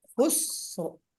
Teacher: لفی خسر، لفی خسر، خسر، سین کو باریک پڑھنا ہے اور را کو پر